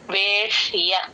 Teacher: ఆ ష కింద యవత్తు కూడా క్లియర్ గా వినిపించాలి